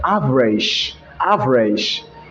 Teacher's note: in another nigerian accent they like to replace the sound g okay with letters s h